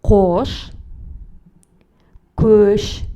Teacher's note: Кош звучит твердо, так как в нем твердый гласный звук О. Көш – мягкое слово, в нем присутствует мягкий звук Слова в казахском языке могут быть или твердыми, или мягкими.